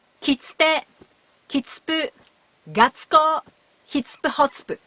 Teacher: If we remove the vowel u from the end of big tsu, we are left with sound ts, which is closer to the sound of small tsu.